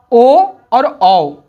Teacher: ओ और औ का उच्चारण कंठ और ओष से होता है